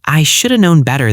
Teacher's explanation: I know that should have typically reduces to shoulda in casual discourse.